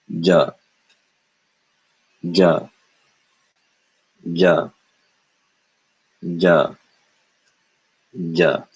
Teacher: this is English J with no air followed by uh in other words j j j j j